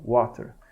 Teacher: então w a é uma semivogal seguido de uma vogal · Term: ditongos crescentes